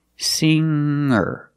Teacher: a hard G sound singer is not correct we say singer make a nasal sound with the NG singer and then link to the r sound